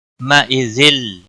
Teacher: یو واولین ہے تھوڑا نرمی کے ساتھ کھینچ کر ادا کریں گے. مَئِذِل تنوین کے بعد حروف یرملون کا لام آیا ہے. ادغام ہوگا بلا غنہ